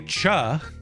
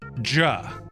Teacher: If you vibrate your vocal cords when you say cha, you get J, which is J.